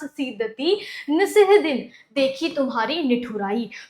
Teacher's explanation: तो यहाँ पर तुम्हें क्या दिख रहा है कि स्पष्टीकरण में ता, दा, उस्सा और ना, जैसे दंते वर्णों यानी कि दांत से बोले जाने जो वर्ण होते हैं, उनका प्रयोग एक साथ हुआ है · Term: दंत्य वर्ण